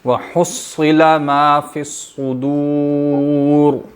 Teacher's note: ہا حلق سے اور صاد موٹی